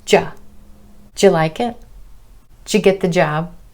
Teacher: Didja will sometimes reduce down even further and become just ja